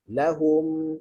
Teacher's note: kita sebut mim dalam mulut kita dengan mim juga, maka kita tak bergerak daripada bibir bertemu bibir. Lahum. Okey, kita nak berdengung.